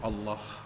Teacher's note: Allah juga dibaca tebal kerana ia bermula dengan hamzah wasal. Apabila awal ayat perkataan yang ada hamzah wasal ni, biasanya kita akan mulakan dengan baris atas, maka Allah itu dibaca tebal, Allah.